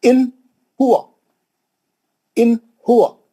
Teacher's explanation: ان ہوا، اس کو بولتے ہیں اظہار، نون کو جلدی پڑھنا، نون کو نہیں کھینچنا، نون کا غنہ نہیں کرنا، ہے نا؟ اس کو بولتے ہیں اظہار، نون کو کلین پڑھنا، چھوٹا پڑھنا، اس کو بولتے ہیں اظہار۔